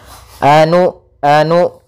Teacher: maka usahakan ketika melafalkan Hamzah sukun itu memiliki sifat yang mana Hamzah memiliki sifat jahar dan sifat syiddahnya maka tertahan nafas dan tertahannya suara